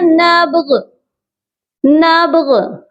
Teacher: با پر قلقلہ کرنا ہے، نبغ کر کے نہیں پڑھنا۔ بہت سے لوگ با کے اوپر حرکت دے دیتے ہیں زبر کی، جو کہ درست نہیں ہے۔